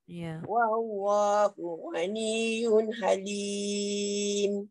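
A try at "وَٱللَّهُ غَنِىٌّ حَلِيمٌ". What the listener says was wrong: Wallahu ghaniyun ada hanjutan kat situ sebab dia ada sabdu tu kan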